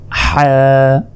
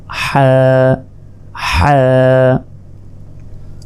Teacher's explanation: ফোঁটা নেই বা নুক্তা নেই এটা হচ্ছে হা এক আলিফ হা হলকের মধ্যভাগ হতে হা উচ্চারিত হয় হা গলায় চাপ দিয়ে এটি উচ্চারণ করার চেষ্টা করুন